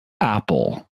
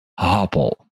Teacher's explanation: listen closely for the glottal stop at the beginning